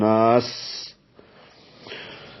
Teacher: اور دوسرا اس پہ سین حروف محموسہ میں سے بھی ہے، یعنی اس پہ ہمس ہوتا ہے تو وہ سانس کی آواز جو ہے اس میں جاری رہتی ہے